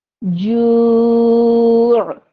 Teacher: اب ہم نے جو کو تھوڑا کھینچا ایک الف کی مقدار، کیونکہ یہاں پہ حرف مدہ ہے، اس کو بھی ہم نے ذہن میں رکھا، اور ہم نے تنوین کے رولز کو بھی اپنے ذہن میں رکھا.